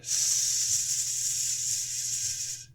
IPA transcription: s